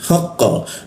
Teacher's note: Ketika qa dimatikan maka efeknya akan memantul dia. Haqqa, nah haqqa seperti itu memantul.